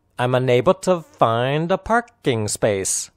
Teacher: a parking tower enable find parking and space are clearly pronounced the unstressed words are i'm to and a